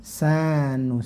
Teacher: sanya cukup diayunkan saja karena ini mad tabi'i, 2 harokat panjangnya atau 1 alif